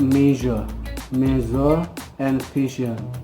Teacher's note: Air is forced through the tongue and point just beyond alveolar ridge. It's called post alveolar. Jadi sama dengan sh barusan, kayak kalimat shot and brush itu, udara dipaksa melalui lidah dan mengarah tepat di luar alveolar ridge.